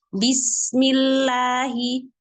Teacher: Alirkan suara sin. Jangan bismi, itu terpotong. Alirkan suaranya.